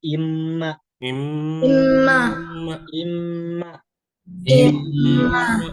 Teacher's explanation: karena imma gunnah ini itu keluarnya dari hidung.